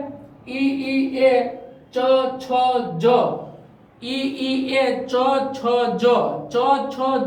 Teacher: તાલવ્ય એટલે ઈ ઈ એ ચ છ જ, ઈ એ ચ છ જ, ચ છ જ આપણે બોલીએ એટલે જીભનો જે આગળનો ભાગ છે તાળવું રહ્યું ઉપર ત્યાં ભટકાય, ત્યાં અથડાય, એને તાલવ્ય કહેવાય, એટલે કે તાલવ્ય ઉચ્ચારણ.